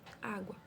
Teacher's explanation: Quando eu falo, por exemplo, a palavra água, olha ela em cima que eu coloquei, água. O U aí, ele é pronunciado, quase que a gente não ouve, né? Quase que a gente não ouve o U. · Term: semivogal